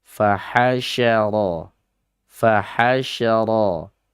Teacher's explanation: sya di situ memiliki huruf khusus sifatnya yang tidak dimiliki huruf hijaiyah yang lainnya, yaitu tafasyi, menyebar atau meluas. Fahasyara, fahasyara, ra-nya tafkhim, fana tabi'i, da-nya adalah tabi'i atau disebut juga bisa dengan mad asli.